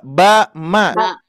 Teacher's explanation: ini ada yang nempel nih, nempel bibir atas bibir bawah, ba. Berarti itu makhrajnya. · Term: Dua bibir